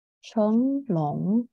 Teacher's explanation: you might feel the vibration in your nose because it's nasal sound, too nasal.